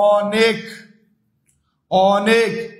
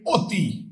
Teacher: অনেকের অ উচ্চারণটা বিবৃত, অতির অ উচ্চারণটা সংবৃত